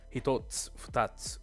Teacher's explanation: you won't hear the u at the end voiced. That's again, it's devoicing.